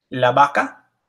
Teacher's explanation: However you choose to pronounce it, it's the same whether it's a V or a B.